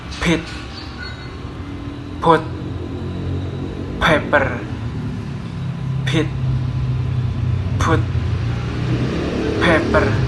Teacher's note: for the voicing is voiceless, and for the place is bilabial, and the manner is plosive.